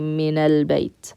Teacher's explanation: In order to connect the two together seamlessly, what we do is we use that helping vowel, the fatha on the noon, na, and simply connect it to that lam.